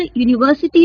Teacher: उच्चारण यूनिवर्सिटी का य से हो रहा है जो कि एक व्यंजन है